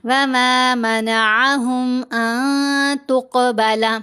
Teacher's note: یہاں قاف ساکن ہے، قاف کے اوپر ہم نے قلقلہ کرنا ہے، قاف کو موٹا بھی پڑھیں گے اور قلقلہ بھی ادا کریں گے۔